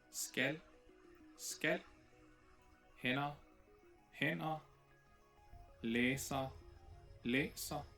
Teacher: there are multiple pairs in Danish where stød is the only difference in pronunciation